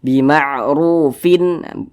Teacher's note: tanwin berjumpa dengan huruf hamzah hukumnya izhar halqi karena dia izhar maka dibaca jelas tidak berdengung jadi dibaca pendek saja